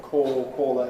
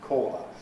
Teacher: So long and short the vowel in a core has close lip rounding in modern RP and so on. Caller it is the most rounded vowel we have. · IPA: ɔː